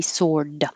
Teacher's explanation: you don't have to release the d sword so you won't hear it so it will sound like sore like my arm is sore · If you just say the word by itself, sword, you don't have to release the D, sword. So you won't hear it.